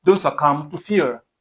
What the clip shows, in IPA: səˈkʌm